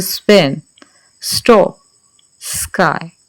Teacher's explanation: जब भी एस के बाद आएगा तो किसी में एस्पिरेशन नहीं होगी